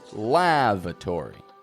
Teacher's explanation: I'm getting that first A strong. La. But the second A is a schwa. A weak, quiet sound.